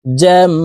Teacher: এই জিম তাসদিদওয়ালা মিমের সাথে গুন্নাহ করে পড়বো। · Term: ওয়াজিব গুন্নাহ